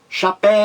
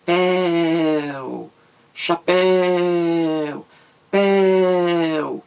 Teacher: Então você grita, chapéu. Você demora mais na última sílaba. Péu, chapéu, péu. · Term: sílaba mais forte